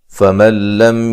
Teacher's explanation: یہاں نون ساکن کا ادغام ہے لیکن بلا غنہ ہے، غنہ نہیں کریں گے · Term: ادغام بلا غنہ